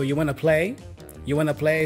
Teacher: And it's all pronounced like one word very quickly.